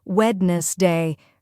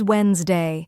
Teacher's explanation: This is another example of English sound reduction. The DNS part is completely silent in natural speech.